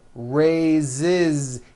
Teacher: So we say I raise with a voiced Z ending, and he raises.